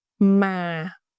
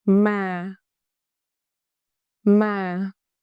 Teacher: it is a falling tone. Pitch go down soft and calm.